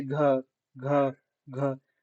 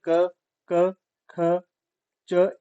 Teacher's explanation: जब हम इनको उच्चारित करेंगे तब नहीं होगा गले में कंपन जब हम घ बोलेंगे तब कंपन होगी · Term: घोष